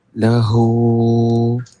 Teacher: hu tu kena baca panjang sikit